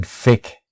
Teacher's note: a lot of people in the UK who have difficulty with the TH sound use an F instead